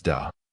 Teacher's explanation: the older generation refers to their fathers as da pronounced with a second tone